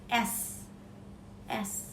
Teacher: bunyi yang dihasilkan di daun lidah dan pangkal gigi. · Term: lamioalveolar